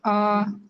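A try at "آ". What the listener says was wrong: আরো টান দেন, আ।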